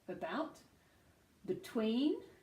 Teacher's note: you can hear the unstressed syllable becoming schwa. Yeah, so bout, so the loudest syllable that I'm saying, bout is the stressed one, therefore not schwa. · you can hear the stress on the second part of that word